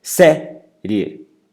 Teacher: Série, mais forte o sé, que é a penúltima. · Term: paroxítonas